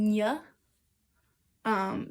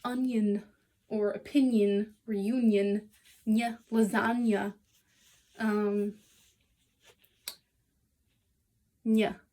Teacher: This is a palatal nasal, and it is similar to, actually it's exactly the sound in English, onion or opinion or union, nya, lasagna, nya.